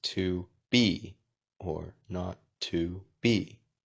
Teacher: the two is softer so to be or not to be so it goes soft strong soft strong soft